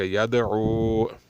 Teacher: یتلو یدعو، بھائی یہاں پہ دال ساکن ہے، یہ حروف قلقلہ یعنی قطب جد میں سے ہے، اس پر قلقلہ کیا جائے گا، بغیر قلقلے نہیں پڑھا جائے گا۔